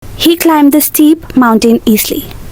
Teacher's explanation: she split and attached the sound in climbed to the next word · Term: Resyllabification